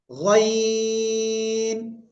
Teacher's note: তিন আলিফ টেনে উচ্চারণ করতে হবে